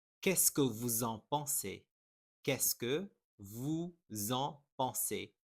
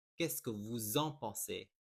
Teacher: there is a liaison here because you have vous, which ends in an S, and the following word starts with a vowel. It will make a Z sound for the liaison.